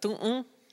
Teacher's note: Spanish doesn't have any nasalization. Like we write it with an N on the end of the word so they know that all the vowels in that word are nasalized